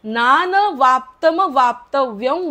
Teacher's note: अनुस्वाराचा उच्चार म नका करू थोडा व करा थोडा व करायचा आहे नान वाप्तम वाप्तव्य वर्त एवच कर्मणी जर